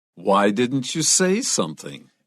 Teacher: 注 意 那 个 重 音 在 say 上 面